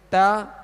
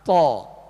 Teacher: تا کو باریک پڑھیں گے اور تو کو پر یعنی موٹا پڑھیں گے